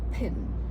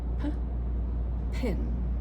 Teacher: I'm talking about an extra burst of air. So, when I say the word pin, if I do p pin, the second one has a lot of air